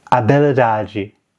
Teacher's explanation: this is Portuguese, and generally, the H is dropped entirely as a sound